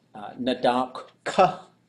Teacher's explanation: So ka is a high tone, short vowel.